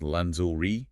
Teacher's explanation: It's pronounced lingerie, and you have to maintain that soft z sound, similar to the middle of the word measure, rather than a hard G sound